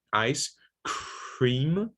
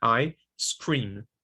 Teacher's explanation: So one of the differences between ice cream and ice cream is the aspiration. Ice cream, you need aspiration, and I scream, no aspiration needed